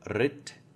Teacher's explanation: So in this example, it'd be rit, but really you don't emphasize or you don't aspirate the end of the T.